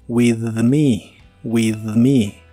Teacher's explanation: conmigo la th de la palabra with normalmente es suave pero si la juntas con una palabra que Inicia con un sonido vibrante como es la m de me la th suena naturalmente vibrante también así que es vibrante en este caso with me with me